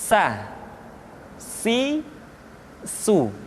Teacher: Berikutnya huruf sa diucapkan sebagaimana kita mengucapkan huruf sa, yaitu ujung lidah di antara dua gigi seri kita